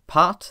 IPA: paːt